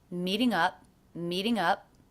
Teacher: I did not release the P here so that's a stop